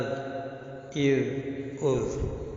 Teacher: زال کا مخرج زبان کی نوک اوپر کے دانتوں کا کنارہ ہے، یعنی ثنائے علیہ کا کنارہ، اذ، اذ، اذ، اور یہیں سے ضو نکلتی ہے، مگر ضو جو ہے موٹی پڑی جائے گی۔